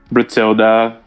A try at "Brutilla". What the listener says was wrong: Brutilla. There's no D. Brutilla. No D in no D in the back part of that.